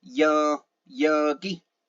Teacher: that sounds very monotone and it does not change the only thing that changes is the length of the vowel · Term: mid or default tone